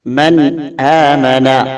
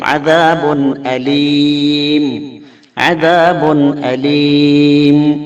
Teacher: ഈ നൂനിനെയും തൻവീനിനെയും വളരെ വ്യക്തമായി, തീരെ മണിക്കാതെ വളരെ വ്യക്തമായി ഉച്ചരിക്കുക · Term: ഇൽഹാർ